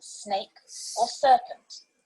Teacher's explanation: the same as their latin letters these are the alveolar fricatives s is the hissing sound in snake or serpent